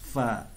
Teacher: bibir bawah ini bertemu dengan ujung gigi atas